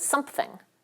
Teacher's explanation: We often epenthesize a little bilabial stop between the bilabial M and the voiceless fricative th. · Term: epenthesis